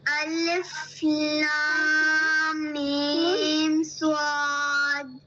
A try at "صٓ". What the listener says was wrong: صاد کو صحیح سے پروناؤنس کیجیے. لاسٹ میں آپ کی ڈی کی ساؤنڈ آنی چاہیے.